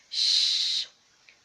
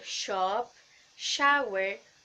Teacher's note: place of articulation is alveopalatal because the blade of body of the tongue is behind the alveolar ridge